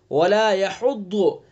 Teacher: ہاں کو حلق سے ادا کریں گے، وسط حلق یعنی حلق کا درمیانی حصہ